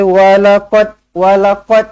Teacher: lantunkan Qalqalah Sugra huruf Dal mati